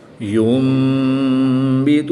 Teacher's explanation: نون ساکن کے بعد حرف با ہے تو نون ساکن کو میم سے بدل کر غنہ زمانی کر کے پڑھیں گے